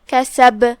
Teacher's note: آخر میں با پہ روکیں گے تو با کا حکم ہوا قلقلہ. قلقلہ کا معنی ہے حرف ساکن کو ہلانا، لہذا ہم با کو ہلاتے ہوئے یہ کلمہ کو ادا کریں گے. یہاں قلقلہ کبرا ہے.